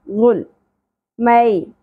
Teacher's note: ساکن پہ فلقلالہ نہیں ہونا چاہیے غل نہیں پڑھنا غل مئی یا ساکن حرف لین ہے یا ساکن سے پہلے زبر ہے اس لیے اس کو نرمی سے پڑھیں گے